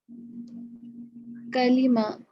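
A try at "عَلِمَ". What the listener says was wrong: अलीमा, काफ है, ऐन है।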